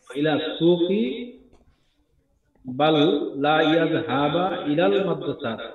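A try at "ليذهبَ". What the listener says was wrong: লি ইয়াযহাবা, এটা লা নয়, লি ইয়াযহাবা।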